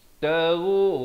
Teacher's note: litabtagu, ghain di hujung kerongkong